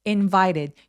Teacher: The king invited 강세의 두 번째 Y에 오고요. invited 할 때 T가 뭔가 굴러가는 소리가 나죠.